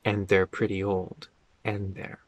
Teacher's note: The D and the TH connect.